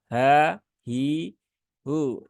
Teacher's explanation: Dia di pangkal tenggorokan yang bawah bersama dengan huruf hamzah.